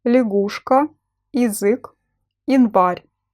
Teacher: The letter Я in the unstressed syllable is pronounced as И.